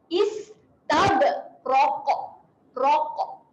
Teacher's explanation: pastikan bunyi huruf qaf apabila berhenti dia melantun dan bunyinya tebal. Munculkan mulut sedikit.